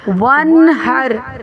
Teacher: را ساکن ہے اور اس سے پہلے زبر ہے اس لیے را کو موٹا پڑھیں گے · نون ساکن کے بعد ہا ہے حروف حلقی میں سے، تو نہ غنہ ہوگا نہ اخفا ہوگا بلکہ ظاہر کر کے پڑھیں گے